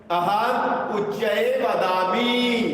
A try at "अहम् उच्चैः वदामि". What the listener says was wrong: महोदय विसर्गमपि वदतु। विसर्गमपि वदतु।